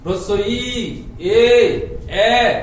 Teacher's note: এই তিনটা ধ্বনি উচ্চারণ করার সঙ্গে সঙ্গে আমাদের জিহ্বাটা কিন্তু সামনের দিকে এগিয়ে আসছে, তার জন্য এদেরকে বলা হচ্ছে সম্মুখ স্বরধ্বনি।